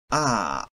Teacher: Open front unrounded vowel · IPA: a